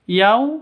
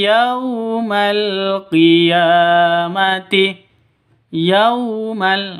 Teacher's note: sifat Lin lentur lemas tidak boleh disentak tidak di boleh didengungkan dan jangan tidak e dan tidak boleh